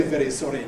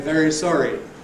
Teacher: ‘[ ˈveɾi ˈsɒɾi fəɾ ] asking’ becomes ‘[ ˈveɹi ˈsɒɹi fəɹ ] asking,’ an ordinary approximant [ ɹ ] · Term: tapped R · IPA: [ ˈveɾi ˈsɒɾi ]